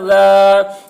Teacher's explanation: الف سے پہلے زبر ہے، الف مدہ ہوا، اس لیے الف مدہ کو 1 الف کے برابر کھینچ کر پڑھیں گے